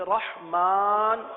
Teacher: اس را کو پر پڑھیں گے، ہا کو واضح کریں گے